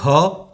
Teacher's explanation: ख, ह कार का भी उच्चारण हो रहा है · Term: महाप्राण